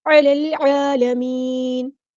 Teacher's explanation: عین کو وسطی لیکن مڈل تھروٹ سے ادا کریں گے۔